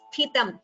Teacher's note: Only the first ta is Mahaprana. Sthi. The second ta is Alpa Prana. So that differentiation should be clear.